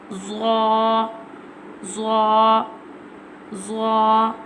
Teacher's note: Zah pronounced from the tip of the tongue touching the inner edge of the top two front teeth